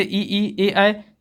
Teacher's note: अग्र स्वर उच्चारण में जीभ का अगला भाग प्रयोग करते हैं